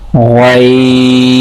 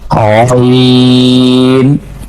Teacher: here we are using our part of throat, that is upper part of throat that is near to the mouth.